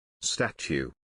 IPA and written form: ˈstætʃ.uː (Statue)